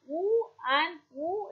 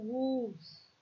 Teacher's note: the lips are closely rounded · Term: long woo sound